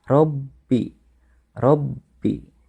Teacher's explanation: Nah, pada lafaz robbi, ya, itu bertasydid, ya. Maka cara pembacanya harus ditekan.